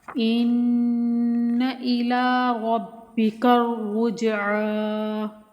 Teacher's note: ان کو بغیر کھینچے غنہ کر کے پڑھیں گے یہاں، ٹھیک ہے، یعنی کہ لمبا نہیں کریں گے لیکن غنہ کریں گے 1 الف کے برابر رک کر۔